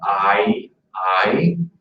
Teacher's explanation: with the I, we're going from an A to an E sound